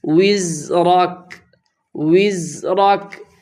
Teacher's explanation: زا میں سیٹی کی آواز آنی چاہیے اس لیے کہ یہ حروف صفیریہ میں سے ہے۔